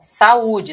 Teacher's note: Ó, saúde, tá vendo aqui, ó? Veja que o U, ele vai ficar separado aqui do A, tá vendo? Vai haver um hiato entre eles. Nesse caso aqui, eu vou ter o chamado hiato.